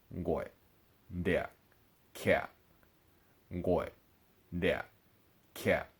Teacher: of the distinguishing factors in the low falling tone is that your voice does start low but then it drops all the way down it drops so low that your voice will actually cut off at the end · Okay, so last tone that we're going to learn for today is the number 5 tone, Whenever we see the number 5 after a word, we know that it's going to be a low falling tone